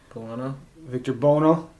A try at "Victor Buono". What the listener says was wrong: That's how you say his name. There's a U in it.